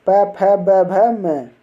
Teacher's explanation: प वर्ग का उच्चारण स्थान होता है होठ